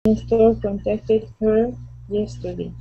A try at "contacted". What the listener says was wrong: Yeah, and that would be contacted. Instead of saying contacted, the accent goes at the very beginning. So contacted her yesterday.